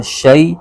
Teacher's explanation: شین پر زبر ہے اور یا ساکن ہے، یا ساکن سے پہلے زبر آ جائے تو یا لین ہوتا ہے، تو اس کو بغیر کھینچے پڑھنا ہوتا ہے